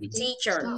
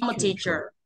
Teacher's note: chữ t ra hơi chữ i kéo dài